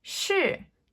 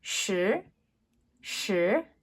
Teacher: So the first is shi, fourth tone, shi. The second is shi, shi, second tone.